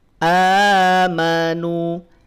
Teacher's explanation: berhenti di amanu nunnya maka Cukup dua harakat saja